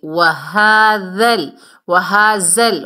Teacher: ذال کو نرمی سے ادا کریں گے اور لام سے ملائیں گے